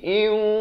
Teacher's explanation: Mi syai'in, di sini idgham bi gunnah, tandun bertemu waw. Asalnya in, tapi bila datang waw terus masuk beserta dengung jadi iu.